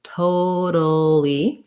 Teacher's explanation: This T is going to be a flap T, sounds a little more like a D